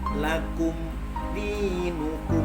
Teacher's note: maka cara membacanya harus jelas dan terang dengan kejelasan cukup satu ketukan tidak boleh lebih karena jika lebih akan dikhawatirkan menjadi bivak atau pohonnya Hongkong Hai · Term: izhar syafawi